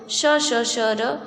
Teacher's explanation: जो हमारा पहला स है वो है तालव्य श, क्योंकि इसका जो उच्चारण होता है वो हमारे तालु के द्वारा होता है